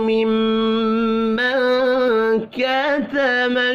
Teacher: نون ساکن کے بعد کاف ہے، اخفاء حقیقی ہوگا · میم مشدد پر غنہ کریں گے